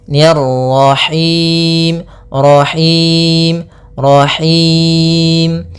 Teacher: rnya lagi tebal karena di sini ro tafkhim yaitu ro yang berharakat tasydid